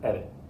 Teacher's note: the tip of your tongue should just flick once against the roof of your mouth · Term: flap